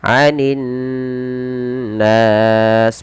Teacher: Cara membacanya yaitu menahan suara nunnya sepanjang 2 harokat. Anin nas, baru lepaskan. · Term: bacaan gunnah